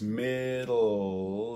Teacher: couple of other diacritics that there's a lateral release middle that you're doing the d around the side of the tongue